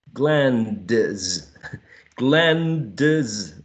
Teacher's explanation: The sound D is elided.